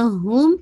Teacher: होम के अंदर मीम का साउंड है should be very clear, because ये नाक़िस गुन्ना है